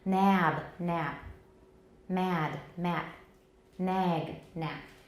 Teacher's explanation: that vowel lengthening is even more important than voicing the final obstruent